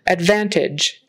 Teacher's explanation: make sure you get the v in there that it's a really good V voiced V advantage and that final consonant is like a j sound that